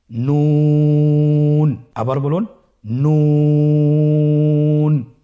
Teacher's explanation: আপনারা স্ক্রিনে দেখতে পাচ্ছেন জিহ্বার আগা তার বরাবর উপরে তালের সঙ্গে লাগিয়ে উচ্চারিত হয়। আপনারা জিহ্বার আগাটা তার বরাবর উপরে তালের সঙ্গে লাগিয়ে উচ্চারণ করুন